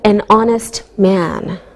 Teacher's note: we don't pronounce the h so it sounds like a vowel sound same with an honest